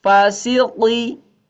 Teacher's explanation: Q-nya lebih tebal. Qi. Ya, sambil dorong ke dalam lidahnya.